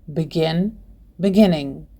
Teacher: The verb begin has two syllables and the last syllable is stressed, so we double the final consonant n before adding ing.